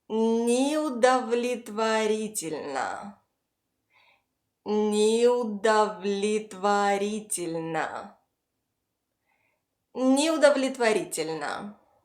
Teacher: The first O is unstressed and it sits far from the stressed syllable, so it's reduced and must be pronounced as an English schwa sound, The other two O's give a short a sound. · Both unstressed “e’s” give a short “и” sound.